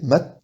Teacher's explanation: mais il y a un e derrière si je dis mat ça bloque à T et donc ça fait mat